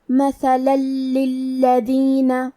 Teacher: ادغام کا معنی ہے حرف کو حرف میں داخل کرنا، تو ہم تنوین کو لام میں ملا کے بغیر غنہ سے لیکن تشدید کے ساتھ یہ حکم کو ادا کریں گے